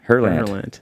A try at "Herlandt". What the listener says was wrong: You don't. Yeah. You don't even say the T.